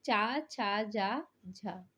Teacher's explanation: स्पर्श संघर्षी जो है वो ध्वनि कहलाती है तालव्य वर्ग की वह है चा छ जा झा यह जो है स्पर्श संघर्षी